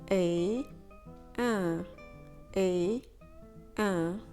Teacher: you start with the sound a like hey but without the h a and then try and push through your nose a a mat it can be spelled many different ways but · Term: nasal